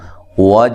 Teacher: جیم پہ قلقلہ ہے، جیم حروف قلقلہ میں سے ہے، اس پہ قلقلہ کرنا ہے واضح طور پہ